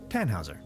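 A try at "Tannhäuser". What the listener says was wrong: We'd pronounce it Tannhauser with an umlaut.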